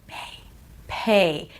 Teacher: when you're Whispering a b sound you're actually pronouncing a p sound